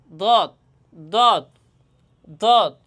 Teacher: দেখেন আমি কীভাবে উচ্চারণ করি, আমি বাম পাশ থেকে উচ্চারণ করি সবসময়, এই জন্য এখন আমি বাম পাশ থেকে উচ্চারণ করে আপনাদের দেখাইতেছি। জিহ্বার ডান বা বাম পার্শ্ব উপরের দুই দাঁতের গোড়ার সঙ্গে লাগাইয়া দত হরফটি উচ্চারিত হয়।